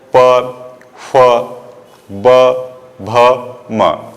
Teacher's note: प वर्ग को ओष्ठ बोलते हैं, यानी होठों का प्रयोग इसमें सबसे अधिक किया जाता है।